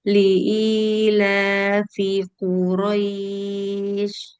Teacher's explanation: Jangan dikebut ris rois. Rnya satu harakat jangan dikebut rnya.